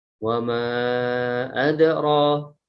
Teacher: Di sini ada rohnya baca panjang. Wa ma adra, itu mad tabi'i yaitu fathah panjang